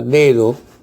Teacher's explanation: En esta palabra dedo, la segunda D se pronuncia con menor intensidad, no con plenitud como la primera D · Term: alófono